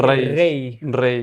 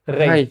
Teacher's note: it would be a rolling R and then American accent for the word ray